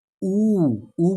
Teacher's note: वृत बन रहा है हमारे ओठों में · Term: वृत मुखी स्वर